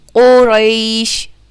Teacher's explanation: قاف جو ہے وہ پر ہے، اسے ہم موٹا کر کے پڑھتے ہیں